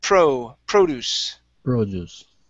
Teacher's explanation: Stress at the very beginning of that word.